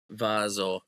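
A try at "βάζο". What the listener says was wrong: Vaso, not bazo, right?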